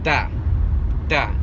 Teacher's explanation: my tongue is being pushed between my teeth almost really hard up against my upper row of teeth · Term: T sound